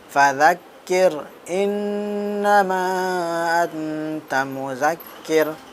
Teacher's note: نون ساکن کے بعد حروف اخفا کے 15 حرفوں میں سے یہاں پہ تا آیات، ان کو ہم اخفا کے ساتھ پڑھیں گے